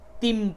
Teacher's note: اس جگہ پہ آپ کو تنوین یا نون کی آواز کو میم سے بدل کر کے پڑھنا ہے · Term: قلب